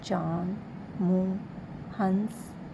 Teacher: चंद्रबिंदु। अनुनासिक का उच्चारण नाक और मुंह से होता है।